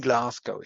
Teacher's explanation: That is the regressive assimilation of the place of articulation. So the velar g spreads the velar place of articulation backwards, and that's why we don't get in Glasgow, but in Glasgow.